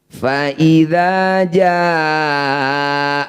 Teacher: panjangkan enam harakat atau enam ketukan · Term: Mad Wajib